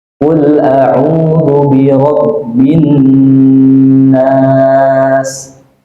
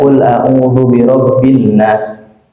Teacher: Nah, di situ sudah nampak ada nun yang bertasydid. Sehingga ketika kita baca, Pak, di dalam salat, di dalam bacaan harian kita harus didengungkan karena hukumnya adalah hukum dengung.